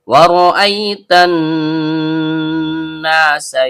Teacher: Ro ujung lidah bertemu dengan langit-langit bagian belakang. Karena r-nya berharakat fathah, maka hukumnya tebal atau tabhim. · nun ujung lidah bertemu dengan langit-langit bagian tengah. Karena nunnya bertasydid, maka hukum bacaannya ghunah asli. Setiap dengung keluar dari hidung. Karena nunnya berharakat fathah diikuti alif layyinah, maka terjadi hukum bacaan mad thobi'i. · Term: tebal atau tabkhim, gunna asli